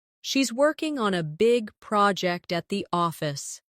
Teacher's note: Stress, working, big, project, and office.